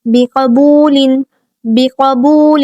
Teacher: یہاں پہ قاف جو ہے وہ حروف مستعلیہ میں سے، اس کو پر اور موٹا کر کے پڑھیں گے